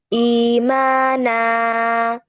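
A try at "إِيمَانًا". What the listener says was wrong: এত বড় না, টু কাউন্ট, দুটোই সমান হবে। ইমানা, মা আর না আর সবগুলো সমান।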